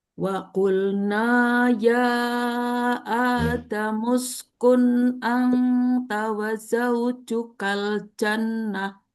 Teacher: A-nya satu ayunan, tapi ya-nya dua ayunan.